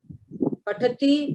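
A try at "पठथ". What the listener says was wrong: It is patatha. It is not patat. It is patatha. It is a full letter.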